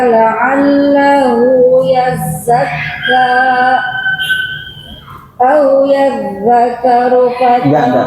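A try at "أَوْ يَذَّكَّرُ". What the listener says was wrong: Au yadzakkaru, kaf tasydid.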